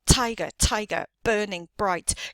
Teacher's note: the emphasis on the first syllable in each of those words